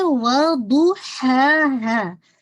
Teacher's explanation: Make sure کیجیے گا ضاد کی دمہ فل ہونی چاہیے، اور جو ضاد کی دمہ، ضاد کی جو ہیوینس ہے، ساتھ ہی دمہ کی گلائی بھی واضح ہوگی، ٹھیک ہے۔